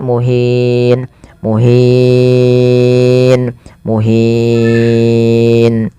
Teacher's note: memanjangkan 2 harokat, boleh 4, dan boleh pula 6 harokat